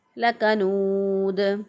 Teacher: दाल पे जो है चूँकि वक़फ़ हो रहा है, सुकून हो रहा है, तो दाल जो है वो कलकला वाले हरूफ में से है, इसलिए दाल पर कलकला करते हुए हमने पढ़ा।